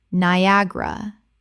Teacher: Three syllables in natural speech with the stress on the second.